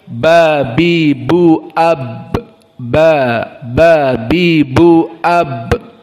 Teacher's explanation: Maka makhrajnya di mulut, di syafatain, di bibir.